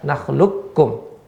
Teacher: Ya, kebanyakan jumhur ulama, qurra khususnya, yaitu ya secara mutlak dia dibaca idgham, ya langsung nggak ada qafnya, seolah-olah tidak ada qaf dan ya langsung ke kaf